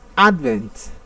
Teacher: The stress falls on the first syllable, although it is a noun word, take note of that.